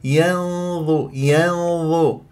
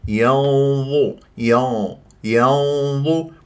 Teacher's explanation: ثالثه مضمومه فلا بد ان اتي بغنه مفخمه يعني ما قل ينظ ينظ هذا غلط لازم تفخم الغنه ينظ